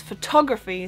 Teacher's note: in English it's photography, so it's on the O, so there's just the flow of the word is different.